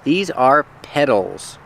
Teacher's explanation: we spell it with the T, but it's pronounced with the fast D sound.